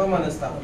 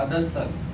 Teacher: विसर्ग निघून जाणार विसर्गाचा स होणार